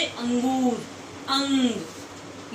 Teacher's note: इनको बोलने से आवाज नाक से आती है नाक से ध्वनि निकलती है